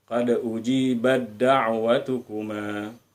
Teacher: Bunyi ta langsung masuk ke bunyi dal.